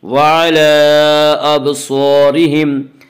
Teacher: وَعَلَىٰ أَبْصَارِهِمْ، ابصارہم کی را کو باریک پڑھیں گے،